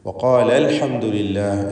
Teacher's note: അലിഫിനെ ഹദ്ഫ് ചെയ്യുന്നതാണ് ഇൽതിഖാഉ സാക്കിനീൻ പരിഹരിക്കുവാൻ വേണ്ടി